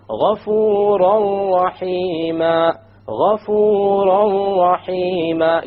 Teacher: You don't hear an N sound because you drop it. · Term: idgham